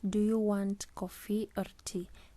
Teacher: the rising intonation falls on the first alternative, which is coffee, and then the falling intonation falls on the second alternative, which is tea. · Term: rise fall intonation